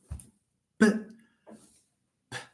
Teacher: P is a voiceless bilabial stop.